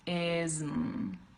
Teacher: So racism, ism. You're doing the I sound, then z, and then you just close your mouth for the M.